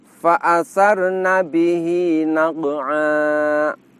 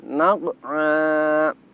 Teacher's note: Perhatikan naq'a. Ketika kita mengucapkan naq'a, terasa di situ tidak ada aliran nafas.